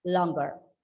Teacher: The word has got the g sound. There are 2 syllables in this. And of course, it's an adjective. The stress is on the first syllable, and you pronounce the word as longer.